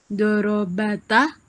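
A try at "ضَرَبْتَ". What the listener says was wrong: Ba-nya dimatikan ya, Bu ya?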